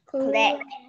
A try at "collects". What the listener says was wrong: That's got an S on the end of it, so you got to add that S.